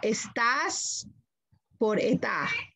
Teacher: aspiración parecido a un soplido de ese al final de la sílaba